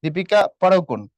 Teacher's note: মানে ডিটা হুবহু বলে দীপিকা পাড়ুকোন এমন পড়তে হবে। আর বাংলায় পড়ার সময় ডির সাথে আমরা রটা সামান্য টাচ দিয়ে পড়ি।